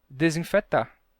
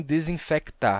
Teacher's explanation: Esse som de k, em final de sílaba, em muitos casos, se perde em português.